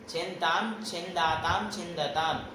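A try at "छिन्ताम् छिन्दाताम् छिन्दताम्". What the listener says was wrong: बहुत सुंदर।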